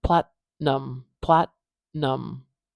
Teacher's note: a t sound TT but here I'm not doing that explosion I'm just putting my tongue up and holding the air without the explosion